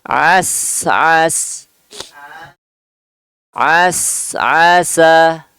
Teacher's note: as as as asa. Oh ya, huruf sin ya disukun jadi dua-duanya lebih sempurna desisnya. Coba as as.